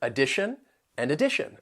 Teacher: third syllable you can hear that schah sound that uh sound the T N is pronounced as shun and the syllable stress comes before it on the second syllable